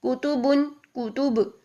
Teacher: با پر قلقلہ کریں گے یعنی با کی آواز کو ہلائیں گے جب ہم نے با کو سائلنٹ کرنا ہوتا ہے